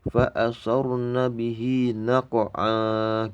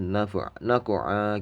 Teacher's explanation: Jadi bunyinya kalau misalnya berhenti fa asarna bihi naq'a gitu ya. Naq'a ini meskipun ada tanwin fathah, bunyinya bukan an. Jadi naq'a gitu ya. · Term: qalqalah sugro